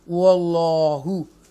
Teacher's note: फिर आगे अल्लाह के नाम को तफकीम के साथ पढ़ेंगे क्योंकि ज़बर है। वल्लाह बोल्ड पढ़ेंगे, ब्रॉड वाइज के साथ, फुल माउथ के साथ, स्ट्रॉन्गली आप इसको अदा करेंगे।